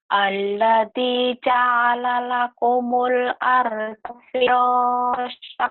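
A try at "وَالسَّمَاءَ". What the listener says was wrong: Wasama panjang. Kok jadi wasa? Wih. Wasama maknya yang panjang.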